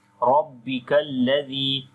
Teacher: ra we read in heavy sound due to fatha sign on it